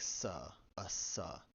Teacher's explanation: Most of the time, esse is a voiceless alveolar sibilant